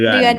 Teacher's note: the way to get sala is to say e, move your tongue back, you to the back of your throat and smile.